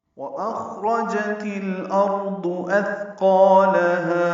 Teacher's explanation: اخ میں حمزہ اقصی حلق سے ادا ہوگا اور اس کی آواز بلند ہوگی، جہر کے ساتھ ادا کریں گے۔ خوپر ہے اور اس پہ ہمس ہے، روپر ہے، جلدی پڑھیں گے۔ · واو ہونٹوں کی نا تمام گلائی سے ادا ہوگی، اخ میں حمزہ اقصی حلق سے ادا ہوگا اور اس کی آواز بلند ہوگی، جہر کے ساتھ ادا کریں گے۔